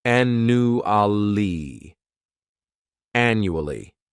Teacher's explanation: The second syllable, it's like you're just saying that letter u. And the third syllable has that schwa · This word has four syllables and the stress is on that first syllable. The second syllable, it's like you're just saying that letter u.